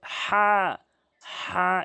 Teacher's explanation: হাটি হচ্ছে হলকের মাঝখান থেকে